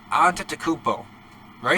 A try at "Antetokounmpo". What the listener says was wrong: I mean, you're slurring the middle part. It's Greek.